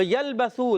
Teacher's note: با کا مخرج ہے دونوں ہونٹوں کا تر حصہ